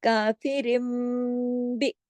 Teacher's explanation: صرف اکیلا را اگر ہوتا اور با آ جاتا پھر کوئی مسئلہ نہیں تھا، لیکن یہاں کاف رن تھا نا، رن، را دو زیر رن، رن نون کی آواز تھی نا، تو اس کو ہی تو میم میں بدلنا ہے